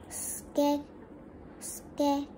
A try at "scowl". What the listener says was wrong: No, it's still one syllable. Sk.